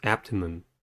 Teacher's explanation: Abdomen has three syllables and the stress is at the first one.